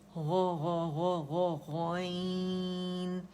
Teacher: गैन इसको नहीं बोलेंगे, गौ की आवाज़ आनी चाहिए